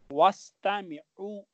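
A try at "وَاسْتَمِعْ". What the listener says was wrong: Wastami, there is no dhamma at the end. So here we don't have Dhamma. We have Sukoon. Wastami.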